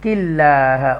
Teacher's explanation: قاف ترقیق کے ساتھ پڑھا جائے گا، باریک پڑھا جائے گا، ڈیلیکیسی کے ساتھ پڑھا جائے گا